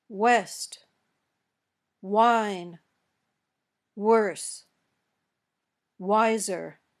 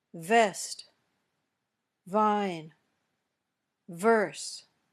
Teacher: your lips are rounded when you say w but they don't touch when you say V your top teeth touch your bottom lip